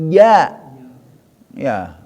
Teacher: lidah tengah-tengah angkat ke atas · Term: wasol lisan